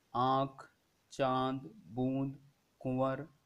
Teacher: अनुस्वार में जो वायु है वो नाक से निकलती है और अनुनासिक में वायु मुंह और नाक दोनों से निकलती है